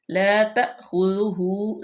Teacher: خودو ہو، غال جو ہے وہ نرمی سے، ہا پہ الٹی پیش ہے تو اس کو ہم لمبا کریں گے